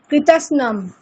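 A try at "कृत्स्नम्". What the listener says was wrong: না কৃতস্নম নয় ম্যাডাম, ওটা হচ্ছে খন্ডেত্ব, মানে ত দন্তেশ্ব ন তিনটেই যুক্তাক্ষর আছে। উচ্চারণটা এরকম, কৃৎস্নম, কৃৎস্নম।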